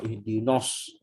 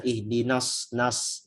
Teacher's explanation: Jadi tipis itu dalam artian jangan sampai nunnya jadi vokal o, itu aja, atau jangan jadi mengarah isti'la yang ihdinos, itu yang salah.